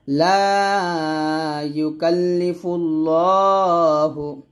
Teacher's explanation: এখানে ল হবে মোটা করে